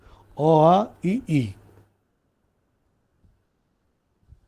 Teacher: कौवा ऊपर उठकर नासिका विवर को बंद कर लेता है और सारी हवा मुंह से निकलती है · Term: मौखिक स्वर